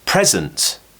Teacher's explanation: So the stress is on pre. We finish with zunt, z.